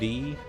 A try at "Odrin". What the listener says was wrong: The D is silent.